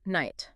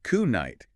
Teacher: over many centuries, that K sound just faded away.